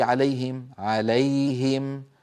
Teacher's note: الياء من وسط اللسان الهاء من اقصى الحلق ايضا اظهار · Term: إظهار